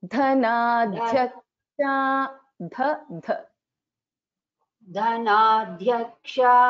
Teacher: Tamam, just in the second word in the first line, धर्माधाराधनाध्यक्षा धनाध्यक्षा so this ध एंड या should be heard very clearly ध ध half ध एंड या ध is a महाप्राण here both should be heard